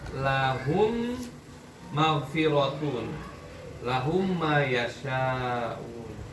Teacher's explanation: Kemudian lawannya adalah idgham mimi atau mutamathilan. Berarti pengertiannya mimnya melebur ke huruf mimnya.